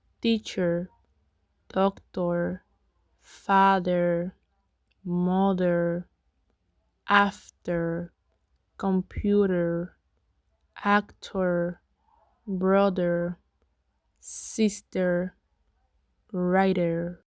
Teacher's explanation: er is located in the central area because it is produced with the tongue in a neutral position. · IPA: ɚ